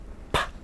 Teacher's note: when you pronounce the P sound imagine when you pronounce the the air is blocked by the lips right completely